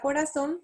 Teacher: la palabra corazón se acentúa en la última sílaba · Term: palabras agudas